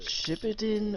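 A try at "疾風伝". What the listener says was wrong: Shippuden. sitting there emphasizing the shit. When the emphasis is supposed to be on the Puden.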